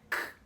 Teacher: não é a ponta da língua que levanta, e sim a parte posterior da língua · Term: som do K